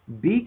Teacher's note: but you see this area here is a little darker uh this is called prevoicing so it's voicing before you open your mouth